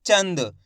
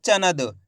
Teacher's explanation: बिंदी लगी हुई ना, इसका उच्चारण आधा नाक रूप में निकालना है, यानी कि तेजी के साथ निकलेगा।